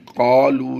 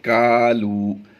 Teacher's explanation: یہاں پر کاف باریک پڑھیں گے ہم، قالو نہیں پڑھیں گے بلکہ کالو